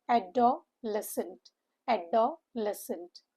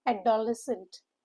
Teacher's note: The O sound makes UH sound and the CENT is UHNT.